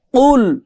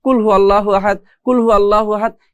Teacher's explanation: কুল এরকম একটা ধাক্কা গলার মধ্যে দিয়ে বা আমাদের জিহবার যে মাঝখানের পিঠ আছে এটা উপরের সাথে বাড়ি খেয়ে আমাদের এই কফটা উচ্চারণ করতে হয়